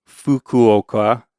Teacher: You're just blowing air, but you're not really vibrating behind it. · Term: voiceless vowel